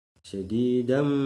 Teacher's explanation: tanwin bertemu dengan huruf mim, didengungkan dan ditahan 2 harokat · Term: idgham bihunah